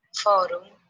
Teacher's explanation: Otra regla es el cambio vocálico que sucede cuando la U se abre y se transforma en O